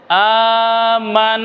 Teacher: গুন্না হয় এবং গুন্না বের হয় নাক দিয়ে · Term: ওয়াজিব গুন্না